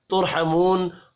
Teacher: ہے یہاں پر بھی اظہار شفوی ہوگا غنہ نہیں ہوگا ترحمون را ساکن سے پچھلے حرف کے اوپر پیش ہے را کو پر پڑھیں گے